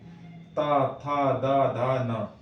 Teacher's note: दंत में यानी कि दांत में जीभ लगेगी